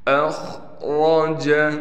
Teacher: خا کو موٹا کر کے پڑھیں گے، را بھی موٹا پڑھا جائے گا اس لیے کہ را پر زبر ہے۔